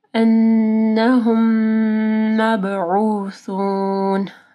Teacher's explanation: نون مشدد ہے، یہاں پہ غنہ ہوگا. پھر میم ساکن کے بعد میم آ رہی ہے، ادغام الشفوی ہے · مب با کے اوپر کلکلہ ہوگا